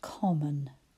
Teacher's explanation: It's another one that uses that schwa in the unstressed syllable. First one, com.